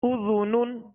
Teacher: نون دو پیش نن اذنن اذنن. ذال کو نرمی کے ساتھ ادا کریں گے، اس میں سیٹی کی آواز پیدا نہ ہو